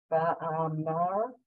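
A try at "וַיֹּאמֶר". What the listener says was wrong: Okay, so this is a yud with an O above it. So you have to say yo, by yo.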